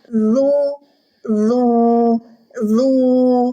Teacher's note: ujung lidah menekan pangkal gigi seri atas bukan Tengah lidah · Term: huruf Dal